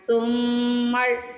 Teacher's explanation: سمر، یہاں پہ غنہ کرنا ہے میم پہ پہلے تھوڑی دیر لگانی ہے، ناک میں آواز لے کے جانی ہے، پھر را کو پڑھنا ہے۔